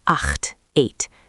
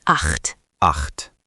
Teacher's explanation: That ch is throaty.